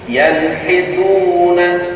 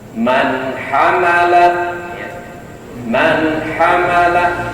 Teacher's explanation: Jadi sekali lagi fokus kepada nun mati ya, dibaca jelas, dibaca izhar